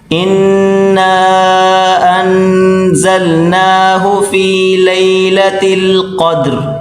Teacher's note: قاف اور دال، یہ بڑی کاف اس کو موٹا کریں گے اور دال سے ملا کر پڑھیں گے۔